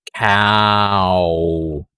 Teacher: the ah open unrounded and then round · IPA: /aw/